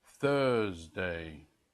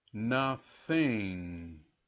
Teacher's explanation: now we'll do the voice less th that is no vibration in the throat